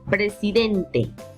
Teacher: la mayor fuerza de voz recae en la penúltima sílaba y eso nos hace notar que estamos trabajando con palabras graves